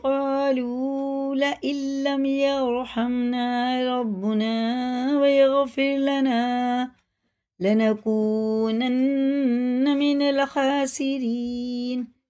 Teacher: را باریک ہے، زیر کے ساتھ ہے